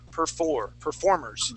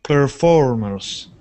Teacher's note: our accent is going to go on that o r sound